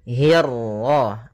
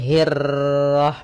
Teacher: untuk huruf ra ketika dia berharakat tasydid itu atau dia berharakat sukun, dia ra-nya 1 kali takrirnya. Tidak boleh banyak-banyak, tidak boleh hirrah.